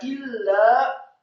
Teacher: kata illa, alifnya kasrah 1 harokat, kemudian lam alifnya ditasydidkan, ditekankan. Lam yang tasydid ditekankan, bukan digunakan.